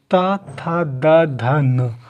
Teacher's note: जीभ है वो दांत से चुभ रही है, तो इसे बोलते हैं दंत व्यंजन या दंत्य व्यंजन